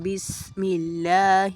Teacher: اللہ کا لام باریک پڑھا جائے گا